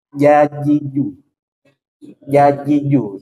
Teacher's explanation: jim shinya adalah di tengah lidah posisinya dia di tengah lidah Tengah lidah yang pertama ini huruf Jim Tengah lidah menempel ke langit-langit atas · Dia ditekan di tengah lidah, tekan di atas.